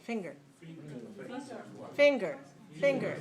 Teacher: a two dash one word a two one word that means it has two syllables it's stressed on the first syllable the first syllable is louder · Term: syllable stress